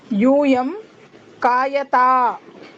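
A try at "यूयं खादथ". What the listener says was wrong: కా కూడా మహాప్రాణమే.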